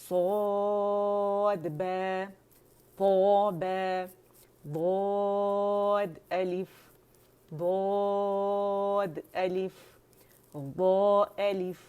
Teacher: جتنے بھی اطباق والے لیٹر جیسے صاد, ضاد, طو, و, یہ چاروں اطباق والے لیٹر ہیں, اس میں زبان تالو سے لپٹ جاتی ہے